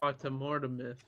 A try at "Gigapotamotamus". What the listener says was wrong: There's not a single R in there. Gigapotamotamus the Fourth.